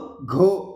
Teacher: घ मध्ये जास्त श्वास घ्यावा लागतोय, महाप्राण आहे